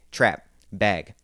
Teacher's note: the a sound in words like trap and bag those that's going to get moved up so we don't say trap and bag we say trap bag